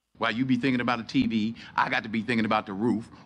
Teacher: i'm personally hearing a stress on you tv i and roof